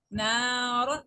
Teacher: را کو ہم نے بولڈ پڑھا ہے چونکہ اس کے اوپر دو زبر آ گئی ہے